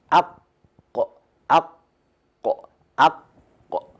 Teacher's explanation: the deepest part of the tongue should touch the soft palate. So when we say aq, aq, aq, and specifically in this letter qaf, we use the uvula.